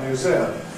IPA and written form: mjuˈzɪəm (museum)